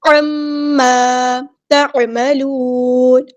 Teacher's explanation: عین کو وسطی ہے لیکن مڈل تھروٹ سے ادا کرنی